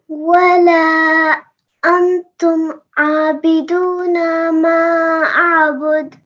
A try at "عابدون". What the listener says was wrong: عابدون، ٹھیک ہے نا، تھوڑا سا کم لمبا ہوگا.